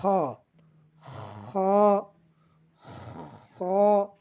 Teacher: খ আমরা হলকের শেষ হইতে উচ্চারণ করব